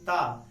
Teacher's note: आपकी जिह्वा तुरंत जाकर के स्पर्श कर रही है किससे? दंत से।